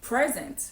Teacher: So, you can either say present, so you stress the second syllable, or you say present, so you stress the first syllable